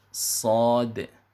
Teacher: Jadi sa-nya dipanjangkan 2 harokat, kemudian di ujung ditutup dengan huruf dal, ya. Makanya diqalqalahkan. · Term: huruf sad